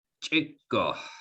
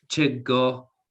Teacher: a long k in the middle right these two k's